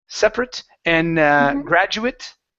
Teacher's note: In the United States, we have plenty of words where we pronounce the ATE. Okay, the ATE at the end of a word, like a short I and a T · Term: an it sound